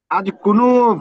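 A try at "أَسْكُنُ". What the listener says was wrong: হ্যাঁ, আজ না, আস, সিন সিন, আস।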